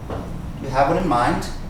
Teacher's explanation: This D sound actually sounds like a T.